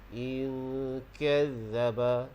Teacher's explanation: Dengung, pastikan bunyi di bahagian pangkal lidah, di bahagian makhraj huruf kaf. In kazzaba, huruf zal di situ jangan bagi bunyi lebah.